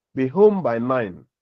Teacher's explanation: the second word, home, the vowel component involves what? Nasalization, because it is followed by a nasal consonant. · Even though all the words are produced in a rapid speech or in a natural speech, the last word, which is 9, the vowel component is nasalized because it is followed by a nasal consonant